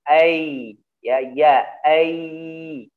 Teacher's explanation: Karena ya nanti memiliki sifat yang disebut dengan rokhawah gitu ya. yaitu mengalirnya suara.